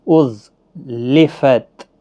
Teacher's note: ز کو سختی کے ساتھ پڑھیں، حروف صفیریہ کا حرف ہے. أُزْلِفَتْ کسی بھی حرکت والے با کو کھینچنا نہیں، تا ساکن ہی رہے گا.